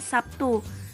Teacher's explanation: atau dipengaruhi misalnya kata Sabtu dalam bahasa Indonesia lazim diucapkan Sabtu terlihat bunyi B berubah menjadi P sebagai pengaruh bunyi teh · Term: asimilasi